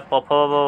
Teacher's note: प ध्वनि का मैंने आपको बताया कि ओष्ठ होता है, फ ध्वनि भी ओष्ठे होता है, प फ ब वाला।